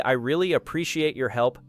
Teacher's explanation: If you say, I really appreciate your help, stressing really adds sincerity